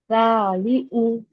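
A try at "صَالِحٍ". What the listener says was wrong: हाँ, देखो, हा के लिए अच्छे से एक्सेल करो। सालिहु, हु, हु, हवा बाहर फेंकना।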